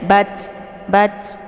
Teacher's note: Ta ini kalau sukun dibaca hamas, jadi ada anginnya. Jadi yang dibaca di sini bunyi anginnya, bukan bentuk hurufnya ya.